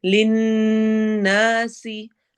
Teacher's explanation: نون غنہ اور الف مدہ، سین میں سٹی والی آواز ہوگی